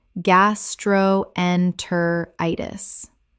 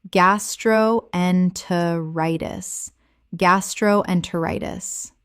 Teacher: 6 syllables with the stress falling on the fifth.